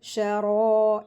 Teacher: را کے اوپر زبر ہے اور پھر الف مدہ بھی آ رہا ہے نا، تو را کو ہیوی کر کے پڑھیں گے 2 حرکات کھینچ کے